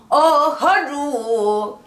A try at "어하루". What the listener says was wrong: 어하루가 아니야. 어하루 너무 많이 어해서 기다리면 안 돼. 딱 팔분음표 하나만 기다려. 부점 찍지 마. 어하루 그놈 하나를 해주고 어하루가 있잖아. 어허거 어허어허루 어허어허를 해주라고. 뒤에가 저기 뭐야 그런 섬세한 그런 작업들이 안 이루어지는 거야.